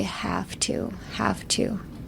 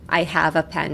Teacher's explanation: have to drop the v sound and half half make an f sound.